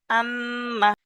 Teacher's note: টান দেওয়া নিষেধ নুনের উপরে তাস এসছে নুন মুশাদ্দাদ ওয়াজিব গুন্না নুন মুশাদ্দাদ ওয়াজিব গুন্না একে এক আলিফ পরিমাণ গুন্না করে পড়তে হবে